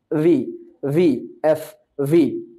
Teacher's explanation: ভি ভি ভি আর এফ এর মাখরাজ একই জায়গা থেকে অর্থাৎ নিচের ঠোঁট উপরের দাঁত